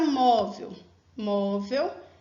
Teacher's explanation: Móvel, ela tem a penúltima sílaba forte.